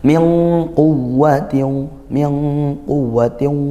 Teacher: nun sukun bertemu qof. Ikhfa hakiki dibaca samar dan dengung. Ah ikhfa hakiki hurufnya 15.